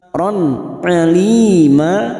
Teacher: fathah tanwin pada huruf ro yang bertemu Ain namanya bacaan idhar halqi dibaca jelas tanpa mendengung